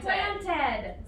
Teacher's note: So planted adds on that like schwa sound